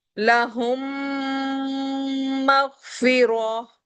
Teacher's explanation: ہم میم کے مکمل غننے کے ساتھ یعنی ہونٹ مکمل میش ہو کر 3 فنگر تک میم کے ساؤنڈ کو روکتے ہیں. اسے کہتے ہیں ادغام شفوی.